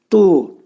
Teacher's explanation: Bu hərfin məxrəci, demək, dil yuxarı damağa dəyər-dəyməz şəkilində, qalın şəkildə